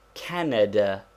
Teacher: there is a slight stress upon the first syllable but not enough to make it a long vowel